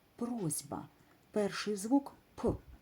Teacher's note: він приголосний він не тягнеться не співається він глухий коли ми будемо його пошепки вимовляти то він не змінюється він губний